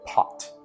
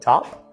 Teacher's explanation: the p in top is unaspirated top the p and pot is aspirated